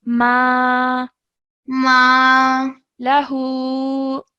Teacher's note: Okay, because the letter before it, meme, has a fathah. So this is an alif mud, which means that we stretch it for 2 seconds. So we say ma lahu.